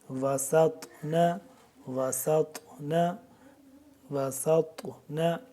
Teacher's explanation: سین کو باریک سیٹی کی آواز اور طا کو موٹا ہم نے پڑھنا ہے